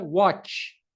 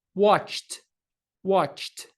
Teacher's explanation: Esse som chiado não está fazendo com que as nossas cordas vocais vibrem. Então, novamente, temos um voiceless sound.